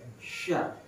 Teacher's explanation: Kemudian ini tadi tengah lidah dan tengah langit-langit sya. Kalau kita perhatikan sya itu kan tengah lidah. Sya. Tengah lidah ditemukan dengan tengah langit-langit.